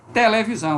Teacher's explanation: Veja que televisão também é contexto pré-tônico, porque a sílaba tônica está lá para o final.